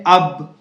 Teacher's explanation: और बा का जो मखरज है वो ये है कि दोनों होठों के गीले हिस्से से अदा होता है